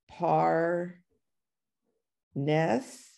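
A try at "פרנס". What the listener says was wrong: Almost perfect, but it's not a P. It's an F sound, not a P sound, because there's no dot. No dot in the pay, in the fe.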